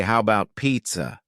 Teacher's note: The first A in the word about is gone. It's just missing.